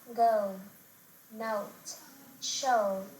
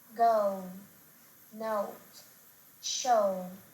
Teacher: The last vowel sound is O to O in British English when pronouncing words like go, note, show. The diphthong O starts in the middle of the mouth. In American English, on the other hand, it begins with the back O